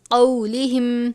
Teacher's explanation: اس کو کو نہیں پڑھنا، قاف واو زبر قو، قولہم.